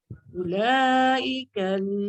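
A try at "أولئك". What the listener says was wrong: Ula panjang. Dia tak cukup 2 harakat dia.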